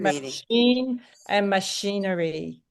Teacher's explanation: the ch sound they made into a sh sound for machine, and now they're making the ch sound into a p.